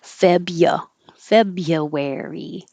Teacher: february don't need to say that r at all